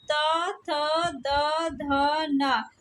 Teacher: ता वर्ग की ध्वनियों को दंत वर्ण कहते हैं